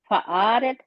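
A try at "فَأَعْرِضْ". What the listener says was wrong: اراد کیجیے ہوتا، اراد نہیں ہوتا. वो आइन को ज़ेर के साथ।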